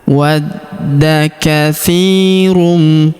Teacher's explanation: Perhatikan huruf da kita tahan dan kita tekan karena terdapat tanda tasdid di atasnya. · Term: tasydid